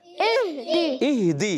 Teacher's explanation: بعض بچے پڑھتے ہیں یا بڑے پڑھتے ہیں اہدے، اہدے نہیں، اہدی